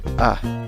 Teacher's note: En la segunda sílaba empiezas a pronunciar la palabra con una N y luego con la vocal schwa, la vocal débil, A, que no es A, ni E, ni O